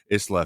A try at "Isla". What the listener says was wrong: I think it's Isla. You pronounce the S, which I don't. Isla.